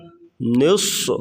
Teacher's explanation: قم اللیل الا قلیلا نصفہ او انقص منہ قلیلا، نصف صاد کو موٹا کریں گے اور سیٹی جیسی آواز نکالیں گے۔